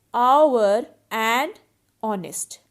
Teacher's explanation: in both these words h is silent so our and honest start with a vowel sound